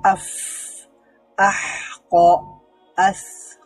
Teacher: আস আওয়াজটা জারি থাকছে, শ্বাসটা জারি থাকছে